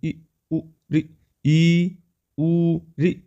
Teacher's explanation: जिन स्वरों के उच्चारण में मुख कम खुलता है उन्हें सम्रत स्वर कहते हैं